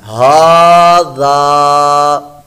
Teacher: کو لمبا کیا، ہا، غال الف زبر ذا، ہا ذا، یعنی ہا کو بھی لمبا کیا، زال کو بھی ہم نے لمبا کیا کیونکہ الف سے پہلے زبر آ گئی تو یہ الف مدہ بن گیا ، اس لیے اس کو ہم نے لمبا کر کے پڑھنا